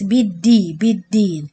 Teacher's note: بالدي, as we mentioned before, the dal without air, so don't make it like ta